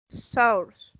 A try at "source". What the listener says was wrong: source. Just forget about the U. Just pronounce source. Source.